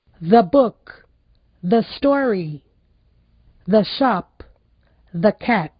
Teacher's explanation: antes de consoante aquele E tem o som parecido com o nosso A